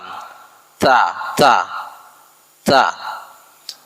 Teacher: tempat keluar hurufnya itu di punggung ujung lidah dan bertemu pangkal dua gigi seri muka yang atas bagian dalam. Ta bertemu pangkal dua gigi seri muka yang atas bagian dalam. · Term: makhraj huruf ta